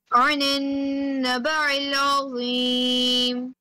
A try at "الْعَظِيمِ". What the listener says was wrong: Azim, Zaw should be heavier.